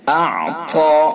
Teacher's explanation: طا کو پر کر کے پڑھیں گے، پر یعنی موٹا